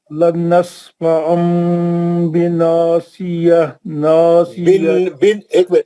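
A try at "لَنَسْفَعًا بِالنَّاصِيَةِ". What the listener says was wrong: एक मिनट, लनस्फअम बिन्नासिया। आप दूसरा गुन्ना छोड़ दे रहे ना नासिया का, नून मुशद्दद नहीं दिख रहा आपको?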